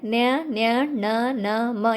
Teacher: ಮೂಗಿನ ಸಹಾಯದಿಂದ ಉಚ್ಚರಿಸುವಂತಹ ಪದಗಳಾಗಿವೆ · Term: ಅನುನಾಸಿಕಾಕ್ಷರಗಳು